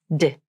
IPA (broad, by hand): d